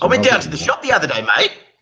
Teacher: Australians, they go up at the end of every sentence to make it sound like it's a question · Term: Australian questioning inflection